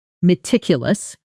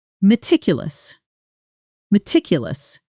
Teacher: Meticulous, strong on the second syllable. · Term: stress